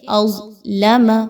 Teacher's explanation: اس کو خوب موٹا کر کے پڑھا جائے گا، منہ کو گول کر کے پڑھا جائے گا، باریک انداز میں نہیں پڑھنا · لام نہیں موٹی ہونی چاہیے، بعض اوقات ایک حرف کو موٹا کرنے کے چکر میں ساتھ والا بھی موٹا ہو جاتا ہے، ایسا نہیں کرنا، اظلم نہیں کہنا بلکہ اظلم۔ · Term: حروف مستعلیہ